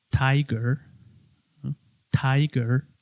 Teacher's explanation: en inglés americano se escucha la r bastante claro